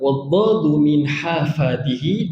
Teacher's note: huruf dad sedikit berat tepi lidah · Huruf dad itu terletak di tepi.